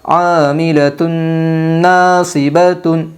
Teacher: ادغام مع الغنہ ہوگا دو پیش تنوین کے بعد۔ یمن کے 4 حرفوں میں سے نون آئی ہے، اس لیے دو پیش تنوین کو غنہ کے ساتھ ملا کر پڑھے گے